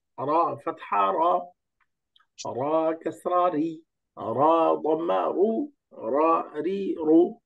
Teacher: জিব্বার আগা, উপরের দাঁতের আগা। র, জিব্বার আগা, উপরের তালু